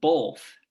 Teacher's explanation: be um where some people will say um both as with some will pronounce it with a sort of l in it